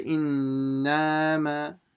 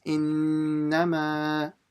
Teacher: Make sure you don't stretch the na. Don't say innama, okay?